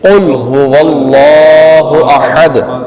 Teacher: قاف کو لام سے ملائیں گے مگر لام پہ قلقلہ نہیں کریں گے، رفع قلقلہ میں سے لام نہیں ہے.